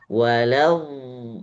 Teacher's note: ada suara yang di tengah-tengahnya di antara la dengan d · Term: suara istidalah